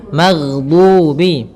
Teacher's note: Kesalahan yang sering terjadi adalah memantulkan huruf ghain, yang mana pada dasarnya huruf ghain tidak boleh mantul, tetapi dia memiliki sifat yaitu mengalir suaranya